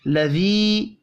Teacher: لذی یا مدہ ہے، اس کو بھی ایک الف کے برابر کھینچ کر پڑھیں گے